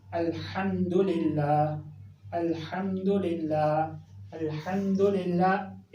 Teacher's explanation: इसको इसी हा से पढ़ना चाहिए जो हलक के बिल्कुल दरमियान से अदा होता है।